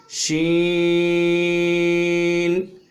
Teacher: شین میں تفشی آوازیں کریں گے